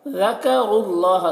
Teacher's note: ज़ाल को बारीक पढ़ना है और रॉ को पुर पढ़ना है, और यहाँ पर रॉ को लाम से मिलाकर पढ़ेंगे